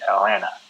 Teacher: we pronounce it as Atlanta, where we don't say the T's. We don't really pronounce them. We just say Atlanta.